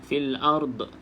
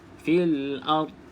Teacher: pastikan dad tidak ada lantunan